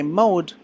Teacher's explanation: your mouth will get more closed and your lips will get more round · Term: diphthong